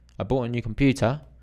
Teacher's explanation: it's a general statement there's just no rise